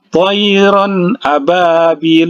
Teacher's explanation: Jadi dia diizharkan, izhar ya, izhar holki ya. Tanwin bertemu dengan huruf hamzah karena huruf hamzah ini adalah salah satu huruf izhar. Jadi jangan didengungkan.